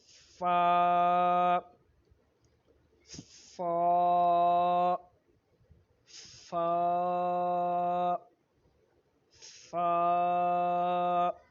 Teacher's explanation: دو دانت ہیں اس کے سرے کو جب ہم نیچے والے ہونٹ کی اندر والی سائڈ کے ساتھ اٹیچ کرتے ہیں، ملاتے ہیں، تو اس وقت یہ فا ادا ہوتا ہے